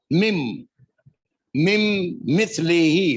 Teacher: میم کو میم سے ملا دینا ہے، نون پڑھا نہیں جائے گا. مم مم مثل ہی، مثل ہم جانتے ہیں اردو کا لفظ ہے، میم سے لام، مثل ہی ضمیر ہے، اس کے جیسی، مم مثل ہی، اس کے جیسی.